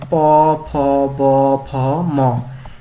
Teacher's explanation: ঠোঁটে বাধা পেয়ে ঠোঁটে বায়ুপথে বাধা সৃষ্টি করে, মানে ঠোঁট বাধা সৃষ্টি করে বায়ুপথে, সেইভাবে যে বর্ণগুলো উচ্চারিত হয় সেগুলো হচ্ছে ওষ্ঠ ব্যঞ্জন